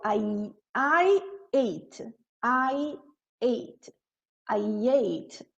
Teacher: eu vou colocar o som do Y.